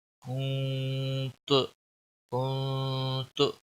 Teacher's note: नून पर इक्फा होगा यानी इस पर गुन्ना होगा। नाक में आवाज़ लेने को गुन्ना कहते हैं।